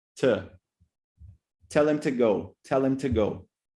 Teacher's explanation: But when we pronounce it, especially because it's a preposition, what happens is that we actually use a schwa sound. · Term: weak forms